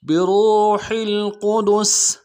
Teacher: قاف کو موٹا کریں گے، دال کو نرم سے ادا کریں گے، سین کی سیٹی باریک ہوگی